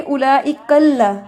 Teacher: कल्ला जो है इसमें लाम को मोटा ना करें. कल्ला नहीं पढ़ना.